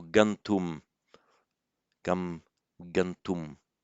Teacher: It becomes, and the m changes to a n before the t